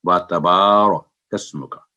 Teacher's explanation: واو پر بھی جو فتح single sound ہے، تا پر بھی سنگل ساؤنڈ ہے، اور با آواز 2 سیکنڈ لمبی کر کے و تبارک اسمک، تو یہ ہے اس کا صحیح تلفظ۔